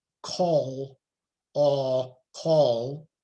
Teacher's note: a vowel will shift back towards that dark L